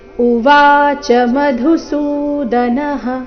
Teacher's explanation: ಚ ಮೇಲೆ ಲಯ ತಗೊಳ್ಬಾರ್ದು, ಕಾರಣ ಚ ಹ್ರಸ್ವ ಇದೆ. ಉವಾಚ ಶಬ್ದದಲ್ಲಿ ವಾದೀರ್ಘ, ಸೊ ಸರಿಯಾದ ಕ್ರಮ ಉವಾಚ ಮಧುಸೂದನಃ.